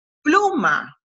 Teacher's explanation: En la palabra pluma, el acento prosódico está en la primera sílaba, en la sílaba plu. Porque cuando pronunciamos estas dos sílabas, aquí hay una y aquí está la otra, hay una más fuerte y plu es la más fuerte.